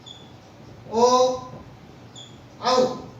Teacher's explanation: जब कंठ और ओष्ठ ये मिलते हैं तो इनको कहते हैं कंठोष्ठ। ये होते हैं ओ औ।